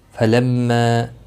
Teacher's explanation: میم مشدد پر گنہ ہوگا